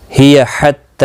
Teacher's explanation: ہی حتی تا کے اوپر کھڑی زبر ہے، ایک الف کی مقدار کے برابر کھینچ کر پڑھیں گے۔